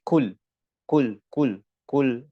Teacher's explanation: Huruf qaf, ya, ini adalah pangkal lidah, lidah bagian paling dalam, ya, ditemukan dengan langit-langit yang bagian dagingnya. Ya, bukan pertemuan antara langit-langit mulut yang pertemuan antara daging sama tulang, tidak.